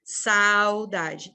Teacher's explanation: Eu pronuncio saudade sem que nenhum vento passe pelo meu nariz. Eu só utilizo a boca. Saudade. No ditongo nasal, o ar, ele vem pelo meu sistema respiratório, parte dele passa pela boca, parte passa pelo nariz. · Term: ditongo oral